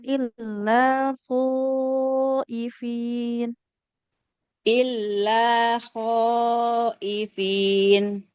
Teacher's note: illafinya minimal empat harakat